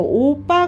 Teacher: 두 모음 사이에서 나는 된소리